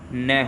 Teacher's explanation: देखिए वर्ष्य व्यंजन की अगर बात करूं तो ये व्यंजन ऐसे व्यंजन होते हैं, ठीक है, जिनमें जो है हमारी जिह्वा मसूड़ों को स्पर्श करती है, ठीक है। जिह्वा जो है हमारी मसूड़ों को स्पर्श करती है